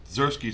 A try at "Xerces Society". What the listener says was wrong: Yeah, I think you're putting a K in there.